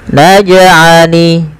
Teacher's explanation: pantulkan jim ketika ia berharokat sukun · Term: qalqalah